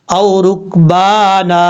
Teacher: وقف کرتے ہوئے ایک زبر کو الف سے بدل دیں گے. لیکن میں آپ کو سادہ لفظ میں سمجھانا چاہتا ہوں کہ اگر آپ کو اس رولز کی سمجھ نہیں آئی تو آپ یہ سمجھیں کہ یہ الف جو ہے لاسٹ میں جو 2 زبر کے بعد آ رہا ہے یہ الف پڑھا جائے گا، یہ یاد رکھیے گا.